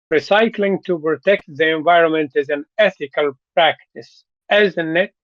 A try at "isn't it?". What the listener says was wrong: You're still making a question. But say it like a statement.